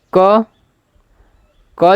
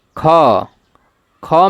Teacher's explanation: क क जो है अल्पप्राण है ख ख में ह आ रहा है लास्ट में ह आ रहा है घ घ में भी लास्ट